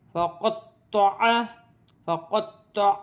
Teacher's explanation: تو موٹے حرف میں سے ہے، مشدد ہے، جماؤں کے ساتھ ادا کیا جائے گا